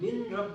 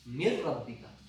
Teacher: نون ساکن اور را کو ملا کر اکٹھے پڑھیں گے